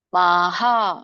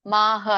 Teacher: ಮಕ್ಕೆ ಆ ಸ್ವರ ಕೂಡಿದೆ, ಅದರಿಂದ ವಿಸರ್ಗ ಕೂಡ ಆ ಉಚ್ಚಾರಣೆಯಿಂದ ಎಂಡ್ ಆಗುತ್ತೆ